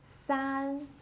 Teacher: first tone again, never drops